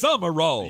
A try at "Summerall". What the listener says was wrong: You put M and R beside each other, and There's no vowel in between it.